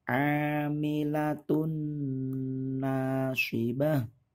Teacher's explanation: sukun atau tanwin bertemu dengan huruf nun mim wawu atau ya' berdengungnya itu kurang lebih dua harokat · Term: Idgham Bighunnah